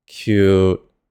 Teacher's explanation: The last part is the six tone, low and flat, cute. You don't have to deepen your voice by an octave or anything crazy.